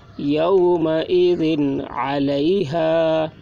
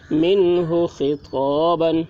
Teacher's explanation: ذال کے نیچے 2 زیر کی تنوین ہے، تنوین کے بعد حروف حلقی میں سے عین آ رہا ہے، اس لیے تنوین کو ظاہر کر کے بلا غنہ کے جلد پڑھیں گے